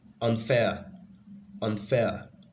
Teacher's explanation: So the stress, or the primary stress in this case, is on the second syllable.